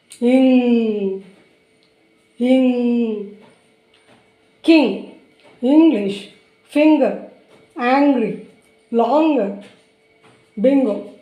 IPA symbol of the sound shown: ng